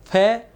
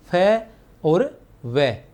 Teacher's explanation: व तथा फ अरबी फारसी के व तथा फ है ये दंतोष्ठ व्यंजन है। दंतोष्ठ ऊपर के दांत एवं नीचे के होठ के मिलने से फ इस तरह तरह से फ और व।